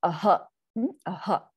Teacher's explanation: So Visarga is an aspirated sound. It is the pushing out of breath, right? And it takes on what happens, that ha takes on the sound of the vowel of the swara that it is attached to.